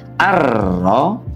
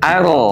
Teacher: Kalau tebal ar dengan mengangkat pangkal lidah kita ke arah langit-langit. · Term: tafkhim